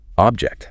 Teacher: That low energy ob just leads right into that hard high energy jack.